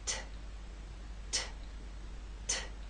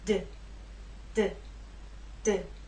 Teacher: You know you're doing it correctly if you can feel the difference between this and its voiced partner, D. These 2 consonant sounds are made basically the same way, but T is quiet, it's unvoiced, and D is voiced. So you'll feel no vibrations when you make the true T sound, t, t, t. · There is more air released. There's a puff, a strong puff with the T. That strong puff is not present with the D.